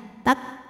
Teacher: huruf kaf dari segi suara sifatnya syiddah, tertahan suaranya tak. Tapi dari segi angin sifatnya hamas, keluar angin.